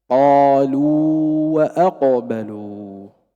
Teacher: لاحظ الواو في قالوا، هذه الواو الأولى لا تدغم في الواو الثانية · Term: حرف مد